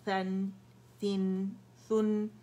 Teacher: ہوا باہر نکالیں سا کے لیے، باریک لیٹر ہے